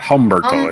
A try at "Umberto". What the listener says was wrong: Umberto. The H is not pronounced.